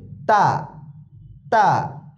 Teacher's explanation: জিহ্বার আগা সামনের উপরের দাঁতের সাথে লাগবে।